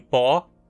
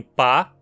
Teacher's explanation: A vogal [ɔ], como em pó, é arredondada. Note como seus lábios se arredondam para formar um círculo. Já a vogal [a], como em pá, não é arredondada.